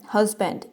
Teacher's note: इसका first syllable हज जो है ना वो स्ट्रेस्ड है क्योंकि यहाँ पे फोर्स दी जा रही है। नेक्स्ट वाला अनस्ट्रेस्ड है।